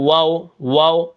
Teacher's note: تو سب سے پہلے آپ دیکھیں یہاں پر کیا ہے، واو کے اوپر زبر ہے. واو جو ہے دو ہونٹوں کو گول کرنے سے ادا ہوتا ہے، واو واو. ٹھیک ہے، یہاں پر ہونٹ گول ہوتے ہیں اس کو پڑھتے وقت.